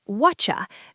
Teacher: in British English, when a T meets a Y, like in what you, it often turns into a ch sound.